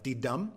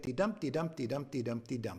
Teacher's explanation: first syllable is unstressed second syllable is stressed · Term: iambic pentameter